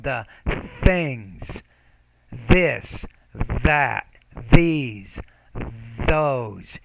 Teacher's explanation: You need to work on pronouncing that interdental consonant, putting the tongue in between the teeth